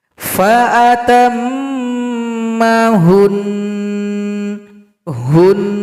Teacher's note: Jika kamu berhenti pada nun dengan tasdid, nun itu akan terdiam atau menjadi sukun. Kemudian setelah itu, kita menggerutu dua harakat atau dua ketukan.